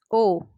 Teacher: ओ होठों की आकृति ओ बोलते टाइम क्या होती है? गोल, यानी कि ओष्ठ।